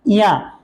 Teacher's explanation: जब हम इया का उच्चारण करते हैं तो हमारा जो जीभ का मोटा वाला भाग है, बीच वाला भाग है, वो तालु को टच करता है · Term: तालव्य